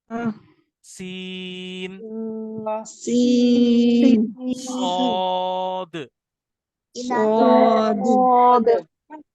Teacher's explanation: ये दो दांतों को मिलाने से ये तीनों हुरूफ अदा होते हैं। सीन के अंदर सीटी बारीक होती है, सौद के अंदर सीटी मोटी होती है, थिक विसल।